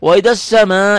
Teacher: Mad panjang wajib dibaca panjang, muttasil karena nyambung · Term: mad wajib muttasil